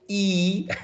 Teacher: your tongue goes up and to the front